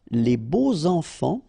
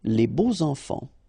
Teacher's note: And here it's quite interesting because even if you've got this X, well, phonetically it will be like Z, so like if it would be an S, okay? Les beaux enfants, all right? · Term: liaison